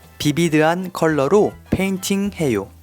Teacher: First, as you probably have noticed, the pronunciation of the adjective vivid is modified since we don't have the V sound in our language. So when foreign words that contain V sound, as in Victor, are adopted in Korean, they change it to B sound